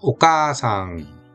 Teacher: 아자를 따로 떨어뜨려서 오카아상 이렇게 읽는 게 아니라 카를 길게 뺀다. 그런 장음이다.